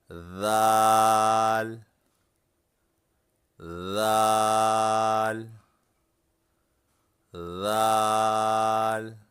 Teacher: ذال کو ادا کرتے وقت زبان کی نوک اوپر کے سامنے والے دانتوں کی نوک پر رکھیں